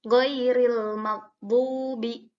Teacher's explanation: jadi ini ya sukun sebelumnya fathah, maka tidak boleh dibaca panjang.